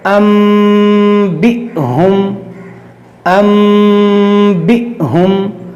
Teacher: اور یہاں پر دیکھیے حمزہ ساکنہ ہے، اس کے بارے میں ہم نے آپ کو بتایا تھا کہ حمزہ ساکنہ کو جھٹکا دے کر پڑھا جاتا ہے